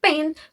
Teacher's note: Bunyi p pada kata pen merupakan voiceless bilabial plosive. Bunyi ini dihasilkan tanpa getaran pita suara, lalu menggunakan kedua bibir dan udara dihentikan sejenak sebelum dilepaskan.